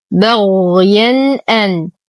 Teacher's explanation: تنوين وبعده الهمز في كلمتين فالحكم إظهار حقيقي مع غنة ناقصة